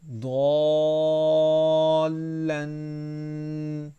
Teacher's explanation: ضال لام الف دو زبر لن۔ ضالن، اب لام کے اوپر تنوین ہے تو یہاں پہ غنہ کریں گے